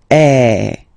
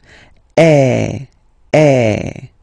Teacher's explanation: the sound is really open, and normally your mouth should be opened a little bit more than with the accent aigu as well. Okay, so it goes like eh.